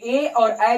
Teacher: तो ए और ए याद कर लीजिएगा कि ए और ए जो है ऐसे वर्ण हैं जो कंठ और तालु दोनों से उच्चारित किए जाते हैं